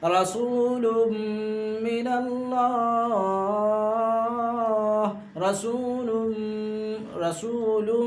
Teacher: ناک میں تھوڑی دیر آواز کو چھپا رہے ہیں، یہاں گننا ہم کر رہے ہیں۔ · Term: ادغام میم